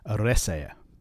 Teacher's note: But remember, those two dots are just there to separate the E from the A. The stress is on the third last syllable because that second last syllable is just a short vowel without a extra consonant at the end.